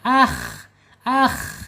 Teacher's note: Iman imana gitu asalnya amanu a'anu gitu [berdehem] mad badal pindahkan ke atas alif akhi ya k ya walaupun dia kasrah ini huruf tebal bapak ibu sekalian ya huruf tebal tidak boleh dibaca akhi tipis ya ini makhrajnya ada di atas tenggorokan ya tenggorokan paling atas · ada di sifat istiala juga ya karena terangkat lidah. Pangkal lidahnya terangkat.